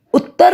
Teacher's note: ਸਜਾ ਹਾਂਜੀ ਬੱਚਿਓ ਇਸੇ ਤਰ੍ਹਾਂ ਹੀ ਉਤਰ ਸ਼ਬਦ ਵਿੱਚ ਕੋਈ ਦੋ ਰਾ ਨਹੀਂ ਆ ਰਿਹਾ ਕੋਈ ਕਿਸੇ ਅੱਖਰ ਤੇ ਦਬਾਅ ਨਹੀਂ ਪੈ ਰਿਹਾ ਤੇ ਜਦੋਂ ਅਸੀਂ ਉੱਤਰ ਪੜ੍ਹ ਰਹੇ ਹਾਂ ਉੱਤਰ ਬੋਲ ਰਹੇ ਹਾਂ ਤਾਂ ਤਤੇ ਅੱਖਰ ਤੇ ਦਬਾਅ ਪੈ ਰਿਹਾ ਹੈ। ਤਤੇ ਅੱਖਰ ਦੀ ਆਵਾਜ਼ ਦੂਰੀ ਹੋ ਕੇ ਆ ਰਹੀ ਹੈ ਤੇ ਉੜੇ ਔਂਕੜ ਊ ਦੀ ਆਵਾਜ਼ ਛੋਟੀ ਹੋ ਰਹੀ ਹੈ। ਸੋ ਇਸ ਕਰਕੇ ਅਸੀਂ ਤਤੇ ਅੱਖਰ ਤੋਂ ਪਹਿਲਾਂ ਉੇ ਔਂਕੜ ਊ ਉੱਤੇ ਅਧਕ ਪਾਈ ਹੈ।